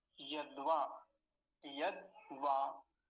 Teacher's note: अब दकार आधा है तो दकार को जल्दी बोला जाएगा, आधा है ना, आधा ही समय लेगा